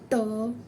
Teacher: याचा उच्चार हा तालव्याच्या वरच्या भागाला लागतो त्याला मूर्ध धन्य असे म्हणतात त्यानंतर ऋ त थ द ध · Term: मूर्धन्य